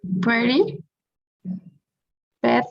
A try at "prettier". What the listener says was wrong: actually it's prettier now we have to pronounce the last vowel